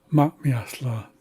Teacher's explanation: there's a brief audible pause before the second m